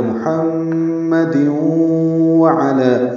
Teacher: یہ ادغام ناقص ہے مع الغنہ، یعنی غنہ ہوگا محمد وعلی، تو یہاں پہ 2 غنّے ہیں، ایک محمد کی میم پہ، ایک دیوں میں ادغام کرتے ہوئے۔